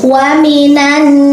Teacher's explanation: ada nun bertasydid atau bersyiddah. Ini adalah hukum bacaannya gunnah. Jadi wa minan diketuk 3 ketukan